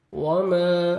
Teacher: وما الف مد ہے، 1 سیکنڈ میم کو کھینچنا ہے